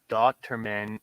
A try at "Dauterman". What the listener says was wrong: why are you gonna say it like so slow, like Dauterman? You got Dauterman.